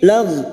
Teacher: Lagh huruf ghain, hati-hati membunyikan huruf ghain, jangan dipantulkan karena bukan qalqalah, huruf ghain.